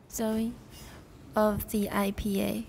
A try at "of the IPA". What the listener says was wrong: Good enough. It also sounds American, but they're pretty close.